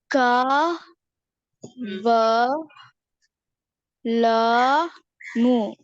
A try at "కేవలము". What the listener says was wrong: కా కాదు అది. కే వ లా కేవలము.